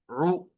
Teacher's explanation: ऐन पेश उ आपके होंठ गोल होंगे और आवाज बिल्कुल आगे की तरफ जाएगी। ऐन पेश उ। ठीक है? · آپ کے ہونٹ گول ہوں گے اور آواز بالکل آگے کی طرف جائیں گی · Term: پیش